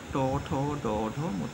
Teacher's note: ট ঠ করার সময় আরেকটু উঁচুতে লাগছে যে জায়গার নাম হচ্ছে মূর্ধা